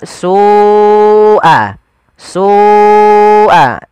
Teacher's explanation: Kemudian melafal su'al azab, Ada lafal su, ada mad wajib muttasil, yaitu lafal su wajib kita panjangkan sepanjang 4 atau 5 harokat